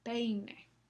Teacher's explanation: empezamos con un sonido más fuerte con la vocal normal y la boca se cierra un poco más para articular la semivocal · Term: diptongos